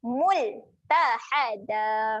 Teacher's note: Mul. Jaga-jaga huruf lam ketika mati sifatnya adalah tahan. Jangan lantunkan dekat sini.